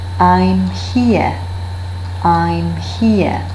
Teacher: after the pronoun I, a bilabial nasal sound is used